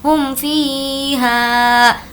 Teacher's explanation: حامیم پیش ہم، فا یا زیر فی، ہم فی، ہا الف زبر ہا، ہم فی ہا۔ فی کو اس لیے کھینچیں گے کہ یہاں پر یا مدہ کا قاعدہ ہے، اور ہا کو اس لیے کھینچیں گے کہ یہاں پر الف مدہ کا قاعدہ ہے۔ · اس میں میم کو ظاہر کر کے ہم نارمل پڑھیں گے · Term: اظہار شفوی